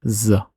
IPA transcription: z